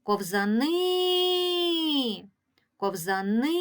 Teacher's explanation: в цьому слові три склади ковзани погукаємо це слово ковзани ковзани чуємо що наголос іде на останній склад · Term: наголошений останній склад